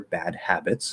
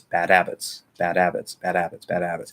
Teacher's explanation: in the flow of normal speech probably what's going to happen the h is going to be ignored